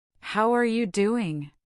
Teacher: notice the contraction how becomes hower in rapid speech. How are you doing?